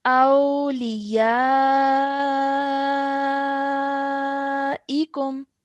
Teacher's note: Okay, let's carry on now. Over here the maddul kabir is found on top of the ya, so we have to stretch that sound out for at least 4 seconds